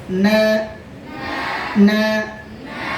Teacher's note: জিহ্বার আগা তার বরাবর উপরে তালুর সাথে লাগান